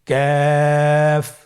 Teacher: তৃতীয় নম্বর হরফটির নাম কাফ। কাফ উচ্চারণের ক্ষেত্রে অবশ্যই পাতলা করে উচ্চারণ করতে হবে এবং 3 আলিফ টেনে পড়তে হবে